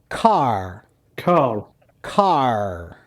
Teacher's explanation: if you watch the american R sound um the tongue is right in the middle of the mouth and it does not go up against the top